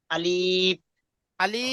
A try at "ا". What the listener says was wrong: আলিফ বলে টান দেবেন না। আলিফ।